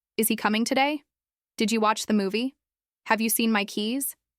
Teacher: In each of these, the pitch rises at the end. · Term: rising tone